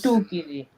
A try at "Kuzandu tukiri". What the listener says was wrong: Again, the nasal, we need to hear it. When you mean nasal, you mean it. Nasal is nasal. Just add N, yeah? Your N for the nasal, then have T.